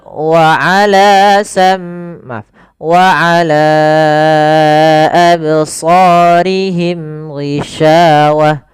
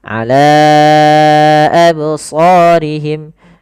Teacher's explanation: mad yang kita panjangkan sepanjang 4 harokat atau 5 harokat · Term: mad jaiz munfasil